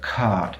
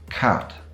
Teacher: If I say cat and cart, you should be able to hear that cart is a lot longer than cat.